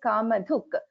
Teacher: dha is a mahaprana. Dha, we are pronouncing with stress.